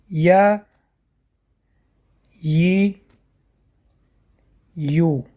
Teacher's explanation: И последняя буква – это буква Я. Я произносят, дотрагиваясь средней частью языка к небу.